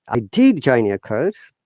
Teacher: Like when you're answering, you're stressing on did. Higher intonation to lower.